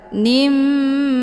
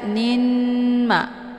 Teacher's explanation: dua kali ketukan nimma ya jadi jangan dibaca n Ma tapi langsung tanwinnya dimasukkan ke huruf mim · dileburkan dengan cara ditekan kemudian ditahan lebih kurang dua kali ketukan nimma ya jadi jangan dibaca n Ma tapi langsung tanwinnya dimasukkan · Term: Idam bunah, Idgham bunah